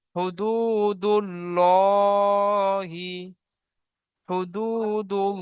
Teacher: আল্লাহ শব্দের আগে পেশ এসেছে আল্লাহ শব্দের আগে বা ডান দিকে, আল্লাহ শব্দের ডান দিকে পেশ এসেছে, তাই আল্লাহ শব্দকে পুর করে পড়তে হবে। ঠিক আছে, আল্লাহ শব্দের আগে পেশ এসেছে, তাই আল্লাহ শব্দর লামকে পুর করে পড়তে হবে।